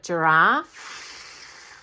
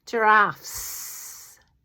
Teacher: when we have a word that ends with a voiceless sound like giraffe, no voicing at the end, and then another one comes along and there's two of them, giraffes.